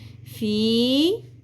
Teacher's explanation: فا زیر یا ساکن حرف مدہ، زیر کو 1 الف کے برابر کھینچیں گے